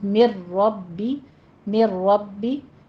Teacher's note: من کی آواز اسکپ ہو جائے گی اور ربی جو ہے اس کے ساتھ ملا دیا جائے گا، تو میر ربی، میر ربی، یہ ادغام بلا غنہ ہو جائے گا۔